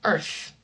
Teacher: Voiced means that you're using the vocal cords. So notice if I say earth, that I'm not using my vocal cords.